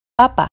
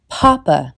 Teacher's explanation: Por eso estos sonidos se llaman “plosivas”, por esta pequeña “explosión” de aire. Hasta ahora la producción de sonidos ha sido igual entre español e inglés, pero una de las grandes diferencias entre estos sonidos es que en inglés se pronuncian típicamente con más aire. Escuchen: en español “papa”, en inglés Papa.